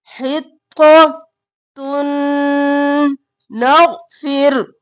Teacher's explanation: تا کو نون مدغم کیا غنہ کرتے ہوئے ، حطۃ نغفر، غین موٹا، نغفر نہیں کرنا، ساکن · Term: ادغام مع الغنہ